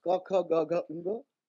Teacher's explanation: The sound ka produced relatively back in the vocal tract is a guttural stop, lending its name to the first of the five vargas associated with the simple vowel a.